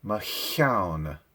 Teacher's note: Notice the lengthening of the vowel because of the double letter there. Single syllable word.